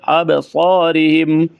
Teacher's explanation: अब बा के ऊपर कलकला करेंगे, बा साकिन है, हुरूफ कलकला में से है